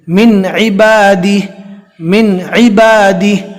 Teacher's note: حمزہ ہا، عین ہا، غین خو، اس میں سے عین آیا ہے، لہٰذا یہاں پر جزم والے نون کو جو ہے ظاہر کر کے پڑھیں گے